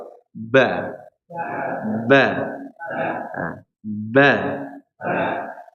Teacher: Kalau huruf ba dia makhrajnya full dari kedua bibir